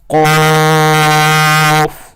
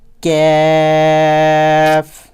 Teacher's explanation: پہلا قاف جو ڈاٹ والا قاف ہوتا ہے اسے ہم نے موٹا کر کے پڑھنا ہوتا ہے، اور دوسرے کو باریک